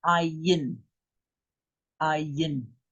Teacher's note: But it is more guttural than the aleph.